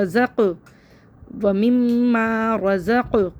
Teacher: قاف حروف قلقلہ میں سے یہاں پہ قلقلہ بھی کریں گے. و مما رزق, نا کھڑا زبر ہے, ایک الف برابر کھینچیں گے.